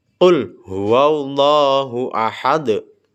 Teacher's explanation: Huruf dal pada bagian akhir yang berharakat dommah tetap dibaca dengan disukunkan dan memantul. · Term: qalqalah kubra, qalqalah kubro